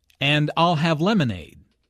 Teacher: Notice how stresses I'll and lemonade to emphasize her choice